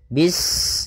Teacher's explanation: Bismillahirrahmanirrahim pada bacaan bis ini sempurnakan huruf sinnya ketika sinnya sukun ini ada sifat safir dia harus kita alirkan nafasnya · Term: sifat shafir